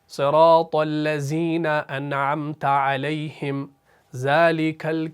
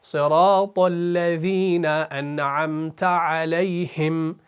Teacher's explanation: آپ نے سنا ہوگا صراط الذین انعمت علیہم ذالک وہ زا پڑھتے ہیں سیدھا، تو زا نہیں ہے، اصل میں ہے ذا. ہلکا سا پڑھنا ہے، ذا کی آواز نکالنی ہے.